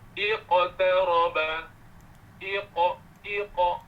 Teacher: semua huruf qalqalah yang sukun, sebelum dia itu huruf baris atas ke, baris bawah ke, baris depan ke, bunyi qalqalahnya hampir kepada bunyi fathah. Hampir kepada berbunyi baris atas.